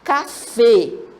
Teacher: a sílaba forte dela tônica é a última sílaba